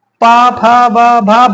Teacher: इसमें हमारे ऊंठ लड़ते हैं। इनको बोलते हैं होस्ट।